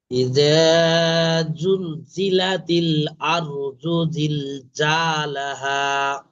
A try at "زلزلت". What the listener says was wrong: হ্যাঁ, জিমের মতন হয়ে যাচ্ছে। জিভের মাঝখানে দিকতে হয়ে যাচ্ছে। ওটা জিভের আগার দিকে হবে। আওয়াজ ঠিক আছে, কিন্তু জিভের মাঝখানে দিকতে হয়ে যাচ্ছে, জিমের কাছে জিমের মতন হয়ে যাচ্ছে। ওটা জিভের আগা দিয়ে হবে, পুরো জিভের আগা।